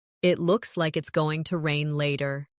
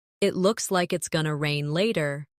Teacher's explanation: In connected speech, going to becomes gonna.